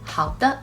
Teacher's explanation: is pronounced with a neutral tone very light and quick